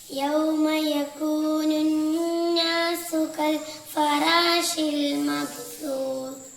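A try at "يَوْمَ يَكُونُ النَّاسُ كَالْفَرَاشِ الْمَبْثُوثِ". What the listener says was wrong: ഒന്നും കൂടെ ഇവിടെ നൂനിന് ഷദ്ദ ഉണ്ടാവുന്ന ശ്രദ്ധിക്കണം. പിന്നെ മബ്സൂസ് 3 പുള്ളിയുള്ള സാ ആണ്.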